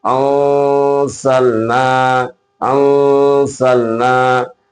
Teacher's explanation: نون ساکن یا تنوین کے بعد زا آئے گا تو زا آنے کی صورت میں اخفا ہوگا